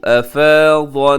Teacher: यहाँ पे अन्नासु नून मुशद्दद है, गुन्ना कीजिएगा